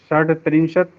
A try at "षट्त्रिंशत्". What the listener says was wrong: डा को टा हो जाएगा, षट त्रिंशत, डा नहीं हो पाएगा।